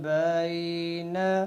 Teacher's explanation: اب بین، با یا زبر بی، یا لین کے بعد ایک لفظ پہ ہم نے رکنا ہے. تو اب یا لین کی جو مقدار ہوگی وہ 2 سے 3 سیکنڈ پہ چلی جائے گی. یعنی 2 سے 3 سیکنڈ کھینچ کر پھر ہم اس کے بعد والے لفظ پہ رکیں گے.